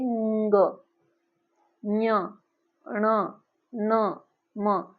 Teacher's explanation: नासिका से बोला जाता है उसकी अनुनासिक संख्या होती है जैसे ंग ञ ण न म इत्यादि वर्ण मुख और नासिका दोनों से बोले जाते हैं